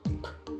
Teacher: p is a popping explosive sound as well so P there's a burst of air